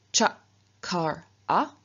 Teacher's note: So, for example, from kr to make to do, we reduplicate the k, but k is a velar consonant, and so it reduplicates as its palatal equivalent, which is ch, and so we get ch kar a.